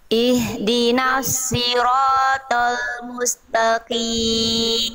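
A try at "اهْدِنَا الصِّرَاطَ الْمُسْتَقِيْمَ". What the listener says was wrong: Ihdinasi jangan si. Jangan si Bunda. Sod. Sod. Ya, pangkal lidah diangkat, dia huruf tebal. Ya, jadi tadi Bunda ihdinasi itu masih huruf sin.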